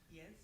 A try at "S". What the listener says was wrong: No, you're saying yes. No, it's S. It's just like, the Muslims, they say hand. They can't say the word sin. They say hand. So you're saying isati. It's not isati.